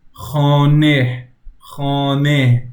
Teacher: We don't pronounce the he that much, but it kind of is there.